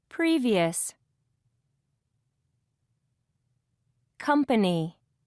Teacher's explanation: Notice which syllable is stressed in these words. First syllable.